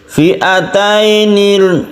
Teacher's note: ada sukun ya sebelumnya fathah, dia harus condong ke i bukan e